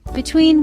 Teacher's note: 2 syllables. Stressed syllable is second.